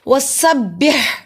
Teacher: حلوے والا ہا حلق کے درمیانے حصے سے ادا ہوتا ہے، اس کو ایسے ادا کرتے جیسے ہوا باہر کی طرف آتی ہے · سین پہ سٹی کی آواز آئے گی